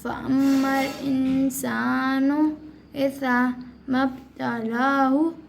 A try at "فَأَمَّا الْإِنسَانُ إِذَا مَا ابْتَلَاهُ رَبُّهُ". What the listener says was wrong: لبو نہیں ربو ربو